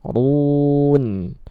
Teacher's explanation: ru dibaca tebal ya ra-nya